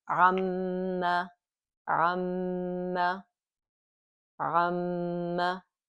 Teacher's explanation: there's a Meem with a shadda on it, and it has a nasal sound. There's a ghunna, there's a nasal sound · So now we have two Meems. One is sukoon, one has a fatha. We merge it together. Now it's ma. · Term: Meem mushaddada bi ghunna